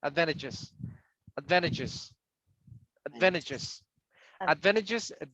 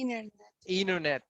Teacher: You always eliminate the letter T if you have an N before.